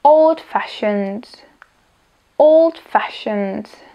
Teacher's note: ak zloženým slovom je prídavné meno zdôrazňujeme druhú Časť slova